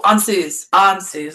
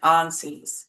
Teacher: But the stress uh for the elder futhark, the stress is always on the first syllable